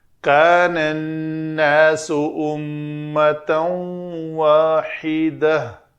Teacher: تو گول تا کے اوپر اگر وقف کرنا ہے تو اس کو ہائے ساکنہ بنانا ہے۔